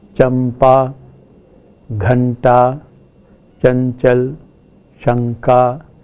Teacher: in Hindi, a nasal consonant takes the place features of a following plosive. So we have a bilabial nasal before a bilabial plosive, a dental nasal before a dental plosive, a retroflex nasal before a retroflex plosive, and so on. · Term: partial assimilation